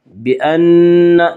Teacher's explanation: بأن نون مشدد غنہ ہوگا، غنہ کی مقدار ایک الف ہے